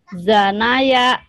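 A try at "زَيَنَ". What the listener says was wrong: Mana ini? Zayana. Zayana. Ini Zanaya, kebalikan ya. Ini Zayana, coba.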